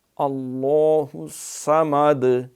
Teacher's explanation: اللہ کا موٹا ہے، الصمد اس پہ شد بھی ہے، اور صاد جو ہے ویسے بھی حروف مستعلیہ میں ہے تو اس کو زیادہ اہتمام سے اور موٹی سیٹی کے ساتھ پڑھیں گے